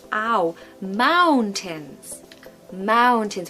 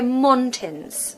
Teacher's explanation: we have this lovely sound that we get a lot in the modern RP accent which is ow